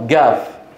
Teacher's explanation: نفس الصوت الذي بعض الناس ينطقون مقابل القاف الصوت جا تصوروا في اليمن بتكون في هذه المنطقه يقولون بدل القاف جاف